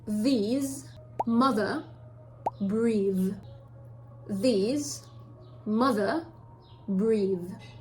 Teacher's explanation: The position is going to be the same. You play with your tongue between your teeth and you blow air, but this time it's going to be voiced. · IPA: /ð/